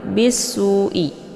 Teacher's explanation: satu suku kata maka ini dinamakan dengan mad wajib muttasil Nah untuk mad wajib muttasilnya dibaca panjang boleh empat atau lima harakat